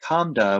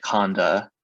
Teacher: But if you have something like kamda, where you have a labial nasal followed by a coronal stop, that M will change to N, and you'll get kanda on the surface